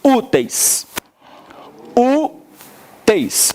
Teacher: Em úteis, a gente tem um ditongo decrescente.